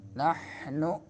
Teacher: ہا درمیان حلق سے